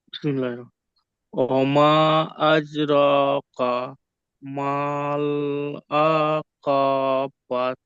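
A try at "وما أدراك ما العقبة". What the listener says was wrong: আপনি আবার বাত বলছেন, ওখানে বাহ, হা উচ্চারণ করতে হবে, গোলতা আছে।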